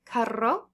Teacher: Double R, you're going to roll it